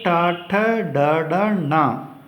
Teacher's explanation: ಇನ್ನು ಟವರ್ಗಾಕ್ಷರಗಳು, ಟವರ್ಗ ಅಂದರೆ ಟ ಠ ಡ ಡ ಣ, ಇವುಗಳು ಮೂರ್ಧ್ವ ಭಾಗ ಅಂದರೆ ನಾಲಿಗೆಯನ್ನು ಹಿಂದೆ ಚಾಚಿ ಬಾಯಿಯ ಮೇಲ್ಭಾಗವನ್ನು ಸ್ಪರ್ಶಿಸಿದಂತಾಗ ಉಚ್ಚರಗೊಳ್ಳುವಂಥ ಅಕ್ಷರಗಳಾದ್ದರಿಂದ ಇವುಗಳನ್ನು ಮೂರ್ಧನ್ಯಾಕ್ಷರಗಳು ಅಂತ ಕರಿತೀವಿ.